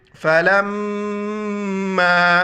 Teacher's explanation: میم مشدد ہے، اس کو غنہ کریں گے